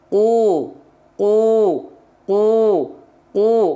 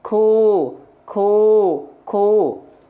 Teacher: pangkal lidahnya nempel ke langit-langit lunak semua ku ku ku ku enggak keluar nafas dia